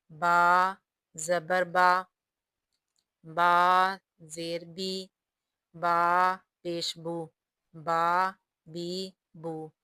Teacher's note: با کا مخرج ہونٹوں کی تری ہے، یعنی ہونٹوں کے طاری حصے سے با ادا ہوتا ہے۔